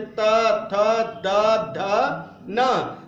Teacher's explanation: त, थ, द, ध, न का उच्चारण करेंगे तो इसका स्पर्श होता है दांतों पर। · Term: तवर्ग